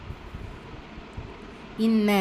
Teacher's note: நூன் முஷதா குன்னா செஞ்சு ஓதணும்